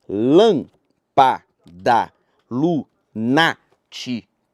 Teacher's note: A antepenúltima sílaba é a tônica e por isso ela é acentuada.